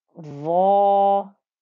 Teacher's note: Then we have a va with a fatha and an alif, so the 2-count stretch on the va is thick and heavy